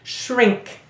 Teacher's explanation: your tongue doesn't go all the way forward when you say shrink to say n, because it's coming back to say the k